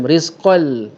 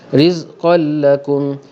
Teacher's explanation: Okey, di sini ada tanwin berjumpa dengan lam dal. Okey, berjumpa dengan lam membawa hukum idgham bila gunnah, teruskan bunyi dengan bunyi lam. Rizqal tak ada dengung.